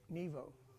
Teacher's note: But when you just go Nevo, then when it's just by itself, and now it's like the long O sound and not the oo sound